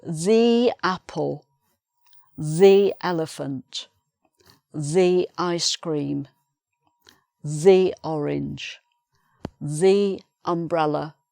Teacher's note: Before the vowel sound we say thee